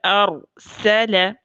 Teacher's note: سین ایک رخوہ نرم حرف ہے، محموسہ ہے یعنی اس میں سانس چلتی ہے، مرقق یعنی ہمیشہ باریک ہونے والا حرف ہے۔ ان کی ادائیگی میں زبان کی نوک اور دانتوں میں مناسب فاصلہ اور جبڑوں میں ہلکا سا فرق ہونا چاہیے، یعنی دانتوں کو زور سے نہیں پیسنا۔